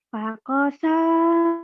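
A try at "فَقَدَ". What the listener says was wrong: Ada titiknya. Ada titiknya bukan siem. Fakodo.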